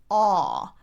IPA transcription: ɔ